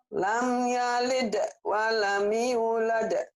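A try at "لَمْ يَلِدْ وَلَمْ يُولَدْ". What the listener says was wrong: Walamnya jangan buru-buru. Lam yalid wa lam yulad. Panjang.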